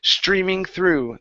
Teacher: Instead of throw with a hard R, use a soft R sound.